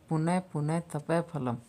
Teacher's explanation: विसर्ग का भेद उपधमानीय, जब विसर्ग के बाद प फ वर्ण रहते हैं तब अर्ध विसर्ग उच्चारण होता है।